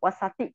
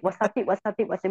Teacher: it does not have the long A, so you need to read a little bit faster, not wasati.